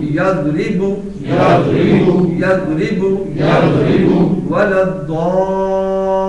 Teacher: ضاد کی آواز دال یا ضا نہ بننے پائے, یہ فرق واضح رہنا